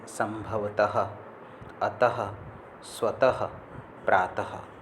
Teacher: इसका उच्चारण ह की ध्वनि से इंगित होता है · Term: विसर्ग